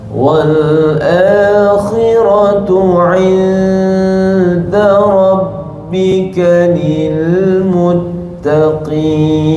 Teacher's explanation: Wal akhi dapat pula sebelah tu ra pula tebal. Khi nipis, mana-mana perkataan akhirat. Khi nipis, ra tebal. Orang biasa buat khi tebal, ra nipis.